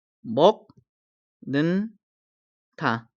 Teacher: 기역이 이응으로 바뀌었죠. 니은의 영향을 받아서 기역이 이응으로 바뀌었습니다. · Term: 비음화